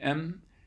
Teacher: with an M, you actually have air flowing out through your nose at the same time as you're making it as well